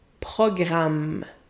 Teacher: the modern French R is not that strong anymore